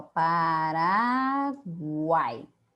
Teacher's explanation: tritongo, de três vogais na mesma sílaba. Por exemplo, a palavra, ó, a, tracinho ra, tracinho uai.